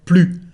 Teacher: we don't pronounce the letter S, the final S, we just say plus.